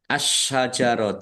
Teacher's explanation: alif lam syamsiyah karena tidak dibaca langsung masuk ke huruf berikutnya yaitu syin